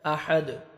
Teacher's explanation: دال حروف قلقلہ میں سے ڈبل ساؤنڈ آئے گا، جب سٹاپ کریں گے ساکن ہو جائے گا